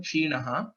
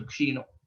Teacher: if we tell the next pada also continuously, there's a visarga sandhi that happens. Because of that, kshinaha will change to kshino.